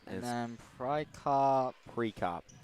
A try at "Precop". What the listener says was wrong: The E is pronounced as an I.